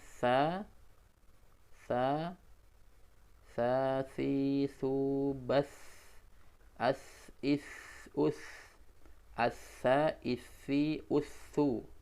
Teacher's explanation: Ya, berikutnya kita ke huruf sa, za, dan zo. Ini dari ujung lidah bertemu dengan ujung gigi depan bagian atas.